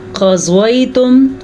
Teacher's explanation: قاف کو پر پڑھیں گے کیونکہ قاف حروف مستعلیہ میں سے ہے اور ہمیشہ ہی پر پڑھا جاتا ہے۔ ضاد کو پر پڑھیں گے، ضاد بھی حروف مستعلیہ میں سے ہے۔